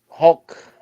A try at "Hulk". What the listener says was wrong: No, Hulk. No, it's there's no O in there. It's Hulk. You're getting there, but there's no O. No Hulk. brother, it's not Hulk, it's Hulk.